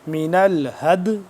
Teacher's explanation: اب اس کو ایک تو دال ساکن پہ قلقلہ کریں گے